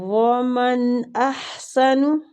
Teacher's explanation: من نون کا اظہار کریں گے، اظہار حلقی ہو رہا ہے۔